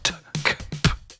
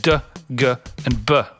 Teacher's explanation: Plosives occur when articulating and projecting some hard consonants. T, K and P, which is toneless, t, k, p, and D, G and B, which has tone